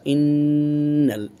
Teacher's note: নুনে মুশাদ্দাদা, ওয়াজিব গুন্না